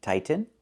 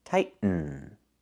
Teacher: The word is pronounced two different ways. You can say tighten and make a real T, tighten, or you can make a stop T, tight, and then go to the N, tighten, tightening.